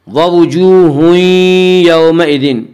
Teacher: وا مدہ کو ایک الف کے برابر کھینچ کر پڑھیں گے۔